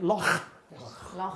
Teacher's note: the sound at the bottom of the mouth it's like a g but aspirated